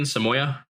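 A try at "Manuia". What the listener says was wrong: Manoia with an M. Manoia.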